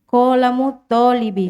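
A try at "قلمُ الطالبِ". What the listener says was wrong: Ya, qalamut talibi. Jadi to-nya itu di tasydid ya. Qalamut talibi.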